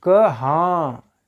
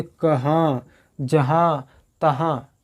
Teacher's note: जब आप हाँ कह रहे हैं तो मुख से ज़्यादा सांस निकल रहा है, हाँ। ठीक है, नाक से कम और मुख से ज़्यादा सांस निकल रहा है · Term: अनुनासिक